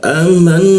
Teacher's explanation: nun bertasjid kita tahan 2 ketukan.